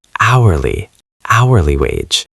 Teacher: The letter H is completely silent. We do not say it at all. Oh. So it starts with the O sound.